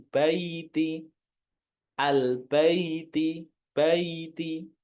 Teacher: Yang ya bayi bukan bae nah kebanyakan Baiti ada yang membaca Baiti bukan ke e tapi ke I